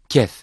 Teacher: dilin kökünden Kaf harfinin çıktığı yerin biraz aşağısından çöker ince ve kuvvetli bir sesle okunur